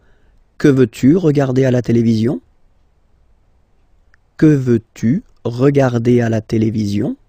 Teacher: you can hear that I've been raising a little bit my voice at the end